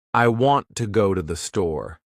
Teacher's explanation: The words want, go, and store are stressed. The other words I, to, and the are much faster and softer. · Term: stresstimed, stress-timed language